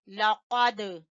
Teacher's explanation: قاف کو زبان کی جر سے اور دال کے اوپر قلقلہ کریں گے